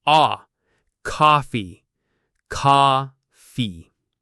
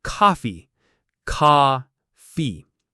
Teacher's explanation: American English, the O sound is very open, like ah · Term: American pronunciation